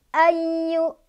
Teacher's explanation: ya-nya agak ditekan karena ada tasdidnya ya.